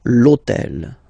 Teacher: All right, and third example, so I took on purpose this hôtel, okay, because it starts with H, but remember that in French we don't pronounce H, okay, so basically the first sound of the word is the vowel O